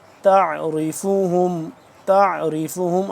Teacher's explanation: عین کو حلق کے درمیانی حصے سے اور کھچاؤ پیدا کر کے کھینچ کے جانے کی ادا ہوتا ہے، تھوڑا سا مشکل ہوتا ہے اس کا سیکھنے کے دوران۔